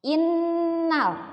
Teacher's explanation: dan Nun yang bertasydid di itu disebutnya gunnah maka harus digunakan dibacanya harus ditahan didengungkan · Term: ghunnah